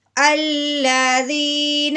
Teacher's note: دال کو نرمی سے پڑھنا ہے، سختی سے بالکل نہیں پڑھنا، اور زیادہ لمبا نہیں کرنا، صرف ایک الف کے برابر لمبا کرنا ہے